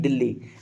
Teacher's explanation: ल का दो बार यहां पे उच्चारण हुआ है एक साथ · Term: द्वितीय व्यंजन